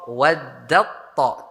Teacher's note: taknya hilang masuk ke dalam to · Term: idgham